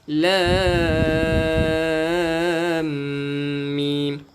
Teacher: Bila kita nak masuk kepada mim, di tengah-tengah ni ada dengung.